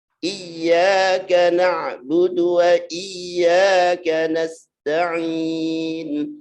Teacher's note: Dia harus iya, ditekan karena ya tasdid.